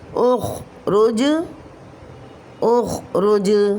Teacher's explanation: جیم ساکن حالت میں کلمے کے آخر میں آ رہا ہے تو یہاں پر قلقلہ کبریٰ ہوگا